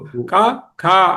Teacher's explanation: క ఖ అన్నప్పుడు గొంతు లోపలే వచ్చేస్తుంది సౌండ్ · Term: కంఠ్యములు